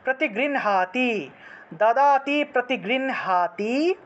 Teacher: সেজন্য হ এবং দন্ত্য ন যদি একসাথে যুক্ত বর্ণ হিসেবে থাকে সেক্ষেত্রে নটাকে আগে উচ্চারণ করতে হবে, হটাকে পরে উচ্চারণ করতে হবে